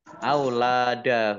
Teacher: Nun tasdid dibaca gunnah atau mendengung ditahan 2 harokat.